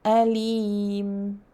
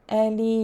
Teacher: The reader should prolong the mad to be mad arid liSukoon